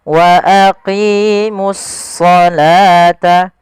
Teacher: Kemudian pada lafal as-shalah di sini ini langsung di sini ada alif lam syamsiyah, yaitu di sini ada alif lam, kita namakan dengan alif lam syamsiyah, yaitu suaranya kita langsung ke huruf shadnya